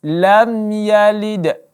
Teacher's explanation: tanpa adanya dengung dan tanpa adanya gunnah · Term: izhar syafawi